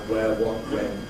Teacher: English people pronounce these with a plain [ w ]